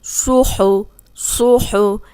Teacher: صاد موٹا ہے، ہا حلق سے نکلے گا